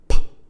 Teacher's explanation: uses both the upper and the lower lip which come into contact they make a closure air press pressure builds inside the oral cavity here and then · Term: plosive